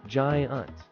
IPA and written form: ˈdʒaɪənt (giant)